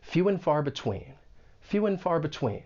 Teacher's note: the word and may get reduced to n. And this is common in spoken English. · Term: reductions